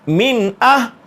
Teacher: بعد آ جائیں تو اس نون ساکن پہ غنہ نہیں ہوتا، یہاں حروف حلقی میں سے حمزہ آ رہا ہے، اس لیے اس نون ساکن پہ غنہ نہیں ہوگا۔